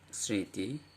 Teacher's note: দেখুন ম উচ্চারিত হচ্ছে না, কিন্তু এই যে স-এর সঙ্গে যুক্ত ছিল এই স-এর স্বরধ্বনিকে সানুনাসিক করে দিয়েছে। স্মৃতি, এবং আমরা দেখতে পাচ্ছি যে এই দন্ত স-এর সঙ্গে ম ছিল, তাহলে দন্ত স-এর উচ্চারণটাকে সে সানুনাসিক করে দিয়েছে, মানে নাসিক্য করে দিয়েছে।